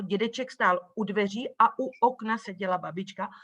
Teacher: en la secuencia a u okna, o sea, antes de llegar a la vocal, pues ahí se produce este golpe glotal